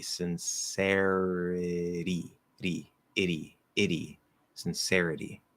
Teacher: It's not even a T, it's a flapped D.